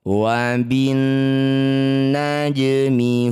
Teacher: Karena huruf yang bertasydid adalah huruf nun, ini sekaligus jadi bacaan gunnah musyaddadah. Cara bacanya bunyi nun kita dengungkan 2 harokat.